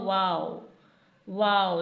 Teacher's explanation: वाव हुर्फ की होठों की गोलाई से अदा होगा, वाव वाव। जब हमारे होंठ गोल हो जाएंगे तो हुर्फ वाव अदा होगा।